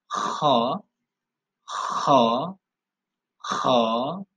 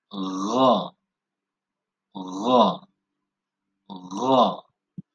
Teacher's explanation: Disebut dengan adna al-halq atau yang disebut dengan ujung tenggorokan.